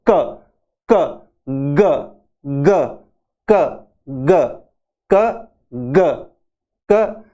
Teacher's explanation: और ये प्लोसिव है, दोनों ही प्लोसिव यानी आवाज एकदम से बाहर निकलती है विस्फोट के साथ में